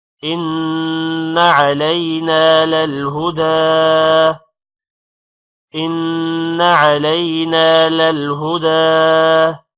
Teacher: إن نون پر غنہ ہوگا، علینا الف کی وجہ سے نا کو تھوڑا لمبا کریں گے. للہدا، دا کو لمبا کریں گے کیونکہ دال پر کھڑی زبر ہے.